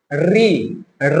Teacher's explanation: जीभ को हम लोग घुमा के बोल रहे हैं। और जब जीभ घुमा के बोलते हैं तो मूर्धा कहलाता है।